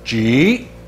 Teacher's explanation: The pronunciation is a falling rising tone,